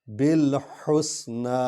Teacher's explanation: ہا جو ہے یہ حروف حلقی ہے، اس کو حلق سے نکالنا ہے